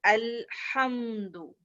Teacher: مگر یہ صفت کہتی ہے التوسط کی لام مخرج پہ تو رکتا ہے, مخرج بند تو ہوتا ہے مگر آواز ٹریول کرتی ہے, تھوڑا ٹائم لیتا ہے